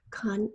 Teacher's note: Con has that schwa, which is spelled with an O in this word.